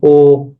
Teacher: ও যখন বলতেছি এটার ঠোঁটটা গোল হয়ে আসতেছে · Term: সংবৃত